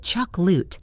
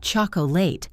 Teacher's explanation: The middle vowel disappears into the schwa.